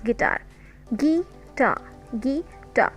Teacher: So tar is louder than gi. So this is called weak syllable. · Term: strong syllable